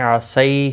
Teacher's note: یالین ہے، تھوڑا نرمی کے ساتھ کھینچ کر ادا کریں گے